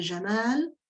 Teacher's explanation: Vous avez Jamal, dont le deuxième A est un A long, qui est marqué ici en alphabet arabe par un alif.